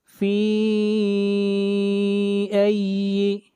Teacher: مد منفصل ہے، 3 الف کے برابر کھینچ کر پڑھیں گے